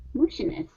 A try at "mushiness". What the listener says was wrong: Okay, instead of mushy, it's mushy. Okay, so what you're doing here, you're saying an oo sound. When you pronounce the oo, your lips are coming close together. You want to open up your mouth.